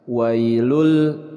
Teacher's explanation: tanwin bertemu dengan huruf lam, ini disebut dengan idgham bila gunnah